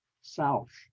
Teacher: My choice would be the word Southern, because it's starting with the root word is South, and it has that South and the soft TH sound at the end with air coming out, South.